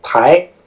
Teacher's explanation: 声，一声就是我们所谓的阴平，二声是阳平。二声呢是由3到5，一声可以写为1到1，二声是由3到5，啊不对，阴平是由5到5，阳平是3到5。 阳平比如说台，它是由一个比较低的三声，第三个音调台升到第五个最高的音调